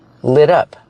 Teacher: We hear the pronunciation of the T in lit up. It sounds like a fast D.